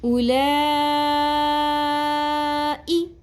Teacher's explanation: اس کو ہم 5 الف کے برابر کھینچیں گے جس کو مد متصل کہتے ہیں